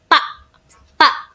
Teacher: Pada huruf ta ini ujung lidah itu menyentuh gigi bagian atas.